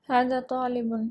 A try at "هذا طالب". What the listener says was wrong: هذا طالب. هذا طا. کیسے کہیں گے, طالب نہیں, کیا کہیں گے ہم, طا. هذا طا. زبان کو تھوڑا سا ٹویسٹ کریں گے, زبان کو تھوڑا سا ट्विस्ट करेंगे, ऐसा मोड़ेंगे, तो हाजा तालिबुन, तालिबुन नहीं, तालिबुन नहीं, तालिबुन, क्या कहेंगे हम